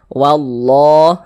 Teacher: Lafaz Allah, sebelum lafaz Allah ada harokat fathah, maka lafaz Allahnya ya dibaca tabkhim, dibaca tebal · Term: lam jalalah